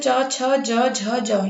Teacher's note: इसमें पांच होते हैं। इसका उच्चारण स्थान क्या होता है? तालु।